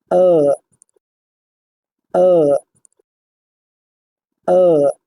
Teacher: Soft palate বা নরম তালু উপরের দিকে থাকবে এবং নাসিকারন্ধ্র বন্ধ থাকবে যাতে বায়ু প্রবাহিত না হয় নাসিকারন্ধ্র দিয়ে। ধ্বনিটি হবে এরকম, আ আ আ।